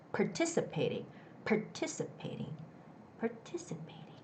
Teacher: there's the stress on the first ti part